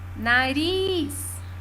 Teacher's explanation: ris é a última sílaba tônica é uma oxítona